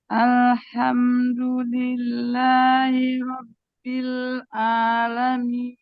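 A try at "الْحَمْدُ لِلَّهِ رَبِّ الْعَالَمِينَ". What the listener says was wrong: Haknya perjelas, ainnya perjelas. Alhamdulillahi Rabbil Alamin. Rabbil Alamin. Rabbil Alamin. A, a. Jadi Bu, bacaan ain itu a, a, tengah tenggorokan ya. Jadi cara itu gini, kalau ini lidah ya Bu ya, ini lidah. Tadi kan ini wilayah epiglotis ya Bu ya.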